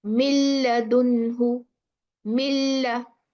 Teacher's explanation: Completely mudgham with the lam.